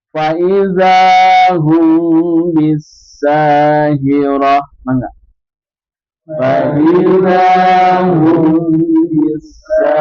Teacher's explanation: Dibaca tipis tarkik sebab saat diucapan pangkal lidah tidak terangkat ke langit-langit